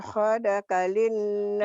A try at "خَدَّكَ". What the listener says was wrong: خدك tasdid Maji. Ada sabdu Maji.